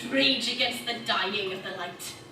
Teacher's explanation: Southern Welsh is this great sing-songy kind of an accent.